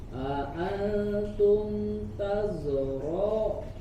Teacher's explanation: Dialirkan dulu sofirnya, alirkan tazra'u, jangan tazra'u, alirkan dulu, biarkan mengalir udaranya, kemudian juga suaranya disempurnakan dengan sofirnya